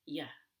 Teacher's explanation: We don't even say the ooh, we don't round our lips, it's just yeah, with really low energy. It's very light.